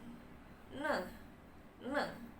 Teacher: ne adalah voiced alveolar nasal teman-teman